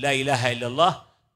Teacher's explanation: حروفها ليس لها علاقة بالشفتين أبدا، حروفها كلها تخرج من داخل الفم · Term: بدون تحريك الشفتين